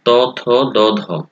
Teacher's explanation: এই ধ্বনিগুলো উচ্চারণের ক্ষেত্রে জিহ্বা দাঁতের গোড়া স্পর্শ করে, ত, থ, দ, ধ, দাঁতকে স্পর্শ করে। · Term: দন্তধ্বনি